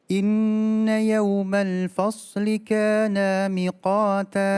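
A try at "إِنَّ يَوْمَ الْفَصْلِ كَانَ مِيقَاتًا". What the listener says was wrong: K-nya panjang.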